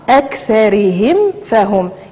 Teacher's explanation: نعم أكثرهم فهم وتنقراوها بحال هكا أكثرهم فهم، يعني ديك الميم حاولوا انتبهوا معها أننا تنظهروها هنا تتبنى وتنظهروها لأن عندنا حكم الإظهار هذه الميم الساكنة. وانتبهوا كذلك لأن تقريبا حرف الميم وحرف الفاء المخرج ديالهم متقارب، يعني داك الشيء خصنا انتبهوا معاه واخا اننا كنعرفوا الحكم ربما ولكن في التطبيق تنغفلوا على هذه المساله.